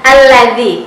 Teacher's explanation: Kemudian siratal ladzi, perhatikan huruf za, jadi jangan dibaca allazi, ya, itu huruf zai, tapi dibaca alladzi, keluarkan lidahnya